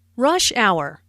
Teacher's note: rush hour is a compound noun with the main stress on the first word.